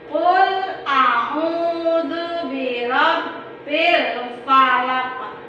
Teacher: Nah, ini ada qalqalah kubro. Jadi dibacanya harus dipantulkan.